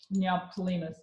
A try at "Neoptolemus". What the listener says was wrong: You don't have to pronounce the P. Highlighted on the oh yeah, Neoptolemus. Neoptolemus. Because it's just a sound. It ends up being silent. Neoptolemus.